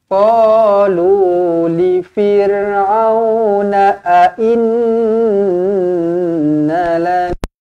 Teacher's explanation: Nun sabdu di sini wajibul gunnah. Nun sabdu wajibul gunnah, dengungkan 2 harakat.